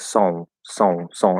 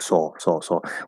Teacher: Where if you say som, right, it's like song, song, song. And so you actually have that nasal O instead of a regular O.